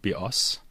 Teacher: the word bios, with the stress on the second syllable, means bow, as in bow and arrow.